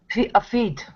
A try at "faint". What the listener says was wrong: Nope. You're saying feet, like the things on your legs. Faint with an N. Faint.